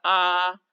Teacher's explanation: विवृत स्वर, जिनका उच्चारण करने में हमारा मुख सबसे अधिक खुलता है